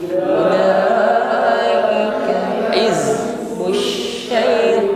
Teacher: zai sukun, nampak sifat yang menyertainya jahr, bukan hamas